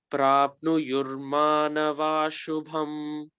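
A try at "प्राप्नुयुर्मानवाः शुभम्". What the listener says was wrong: Nava shubham. Sh has to be pressed.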